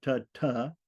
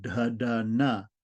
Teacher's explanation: the unvoiced dentals are ta ta, and the voiced dentals are da da na